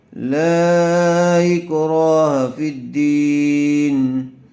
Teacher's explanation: لا اکراہ فی الدین، لام الف مد زبر لا، حمزہ کاف زیر اک، لا اک، را الف زبر را، لا اکرا، ہا زبر ہا، لا اکراہ، فا دال زیر فت، دال یا زیر دی، فت دی، نون زیر نی، فت دین، لا اکراہ فی الدین۔ حرف مدہ کے بعد دوسرے کلمے میں حمزہ آیا ہوا ہے، اس لیے مد منفصل کا قاعدہ ہوگا لام کو تھوڑا زیادہ کھینچ کر پڑھیں گے